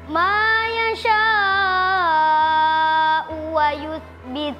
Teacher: Huruf mad alif bertemu dengan huruf hamzah. di lain kata panjangnya empat atau lima harakat. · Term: mad wajib muttasil